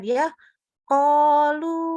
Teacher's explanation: Ingat yang naik di dalam sana pangkal lidahnya, bukan dibulatin bibirnya. Bukan huruf O.